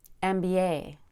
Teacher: Add a Y between B and A for a smooth transition between vowels.